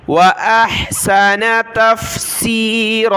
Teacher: ہا کو گلے سے نکالا ، حمزہ ہا زبر اح، حمزہ کی آواز پھر ہا کی،